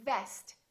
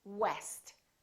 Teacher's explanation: don't round your lips so for example when you say vest make sure that it doesn't sound like west so is just a lower lip touching the upper teeth vest